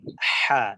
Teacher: জি জি জি, জিম হা, এই হাটা হলকের মধ্যখান থেকে উচ্চারিত হচ্ছে। হা, বাতাসটা একটু বের হয়ে যাচ্ছে। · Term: বড় হা